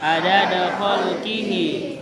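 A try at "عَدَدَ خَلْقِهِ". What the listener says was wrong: Pakai ain, adada khalqihi.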